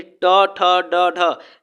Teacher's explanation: अपनी जिह्वा को लपेट करके बोलना पड़ेगा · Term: मूर्धा